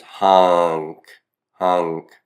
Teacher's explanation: The C's been added, and then the M has assimilated to become an N before that C · your tongue is already raising up in the middle region of the roof of the mouth with the N to get to the C sound, the k sound as well